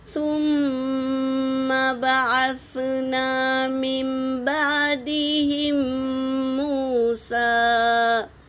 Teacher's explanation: نون کی آواز کو میم سے بدل کر پڑھیں گے۔ یہ اخلاب یعنی چینج کرنا، نون کی آواز کو میم میں بدل کر پڑھنا۔